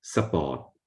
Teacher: Thais don't like that, so they don't say sport, but support. So they insert a schwa, a short vowel, just to break up the S and P cluster.